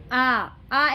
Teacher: आ एक ऐसा स्वर है जिसके उच्चारण में मुख पूरा खुलता है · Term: विवृत स्वर